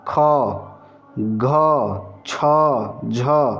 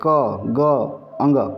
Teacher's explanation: इनमें थोड़ा सा हम प्राण जो डाल रहे हैं आवाज जो डाल रहे हैं थोड़ा सा ज्यादा डाल रहे हैं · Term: महाप्राण